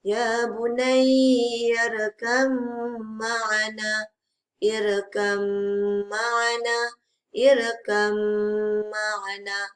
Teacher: Okey, jadi untuk ba dan mim ni kita kena dengungkan bacaan dekat mim ni. Huruf ba yang mati bertemu huruf mim yang berbaris wajib didengungkan dengan kadar 2 harakat.